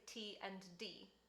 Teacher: made on your alveolar ridge and so basically t and d it's the tip of your tongue against your alveolar ridge and it makes the sounds and they look like a t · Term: alveolar plosives